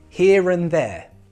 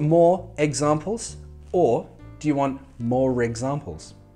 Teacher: But if that next word begins with a vowel sound, for example, in a sentence, here and there, and begins with an A, that's a vowel sound, we then have to pronounce that R to make it sound natural.